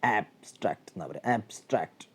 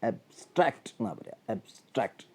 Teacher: ആബ്സ്ട്രാക്റ്റ് noun ആകുമ്പോൾ stress first സിലബിളിൽ വരുന്നു